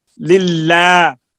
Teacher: لام باریک کے بعد الف آیا، لام الف باریک ہو گیا ہے